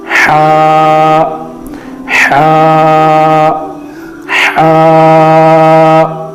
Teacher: تو ہا کو پڑھنے کا اصل طریقہ یہ ہے کہ ہا کی جو آواز نکلتی ہے وہ درمیانی حلق سے نکلتی ہے۔ حلق کے 3 حصے کر لیے جائے، اوپر والا حصہ، درمیانی والا حصہ اور نیچے والا حصہ۔